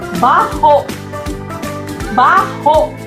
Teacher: kung ito ay ating bibigkasin ng dahan-dahan at mayroong impit na tunog, ang diing malumi, ang bigkas nito ay baho, baho.